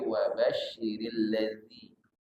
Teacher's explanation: Bukan huruf zai, bukan wa basyiril ladzi tapi wa basyiril ladzi. Alladzi tidak boleh berdesis z, tapi zi. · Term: huruf zal